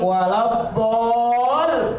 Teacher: bol 6 sampai dengan 7 ketukan namanya mad lazim kilmi musaqqal atau mad lazim musaqqal kalimi.